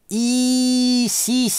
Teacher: Мы по-русски одновременно со звуком «с», сразу же, ставим язык в положение «и». И-си-си. Так возникает мягкий согласный.